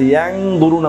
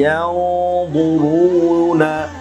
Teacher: এখানে নুন সাকিনে পরে মোটা হরফ এসেছে ইখফার য, য আসার কারণে আমি এখানে গুন্নাহটাকে মোটা করছি, ইয়াং দুরুনা বলি না, বলেছি ইয়াউদুরুনা।